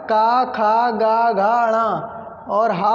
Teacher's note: कंठ से उच्चारण होता है इनका